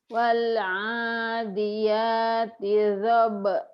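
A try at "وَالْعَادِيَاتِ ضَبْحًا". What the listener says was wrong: Do-nya kurang bulat Bu.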